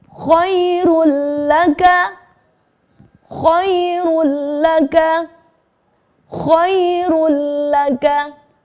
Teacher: Leburkan kata run menjadi masuk kepada huruf lam, menjadi khairul. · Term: idgham bila guna